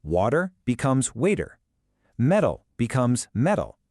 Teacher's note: So when a T is sandwiched between 2 vowel sounds, it's almost never pronounced as a hard T sound. Instead, it softens into this quick, light D sound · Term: the flap T